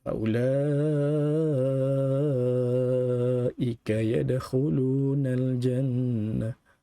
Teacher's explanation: hukum mad yang merupakan mad wajib muttasil yang kita perlu baca secara 2, 4 atau 6 harakat di dalamnya